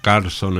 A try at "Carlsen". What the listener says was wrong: Carlsen, con la E. Porque es noruego, si no sería Carlson, ¿eh?